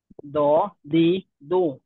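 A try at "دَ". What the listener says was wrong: হ্যাঁ, দালে তো দ হওয়ার সুযোগ নেই, কারণ এইটার নাম আমরা কিভাবে বলি, দল না দাল। দাল, তো দাল জবর দা হবে।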